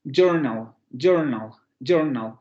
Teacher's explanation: La sílaba final está formada por una nasal y luego por ese fonema lateral aproximante o aproximante lateral alveolar sonoro que está funcionando como más silábico.